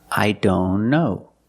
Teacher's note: if you link the sounds I don't know link the N with the other N